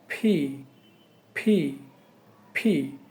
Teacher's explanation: দুই ঠোঁট বন্ধ রেখে ভিতর থেকে ধাক্কা দিয়ে বাতাস বের করলে উচ্চারণটা হয়ে যাবে ফি